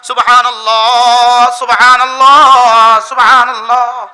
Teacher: শেষে একটা হা আছে, হাটা বাতাসে ছেড়ে দিতে হয়, হা বাতাসে ছেড়ে না দিলে উচ্চারণ এটা আলিফ হয়ে যায়।